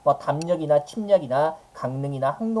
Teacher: 미음 이음 뒤에 리을이 비음인 니은으로 발음되는 거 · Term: 비음화